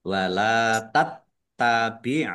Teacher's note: Tattabi'nya dibaca dobel ada tasdidnya ain ya. Wala tattabi ain ahwaahum wau fathah alif mad thobi'i.